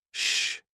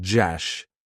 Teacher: In fact, these two consonant sounds, shh and jash, they're a pair of consonants, and the only difference is that one is lighter, the other is heavier using more of the vocal cords